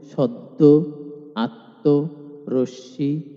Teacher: শব্দের মধ্যে বা শেষে ম ফলা আসলে ম ফলাযুক্ত বর্ণটি দ্বিত্ব হয়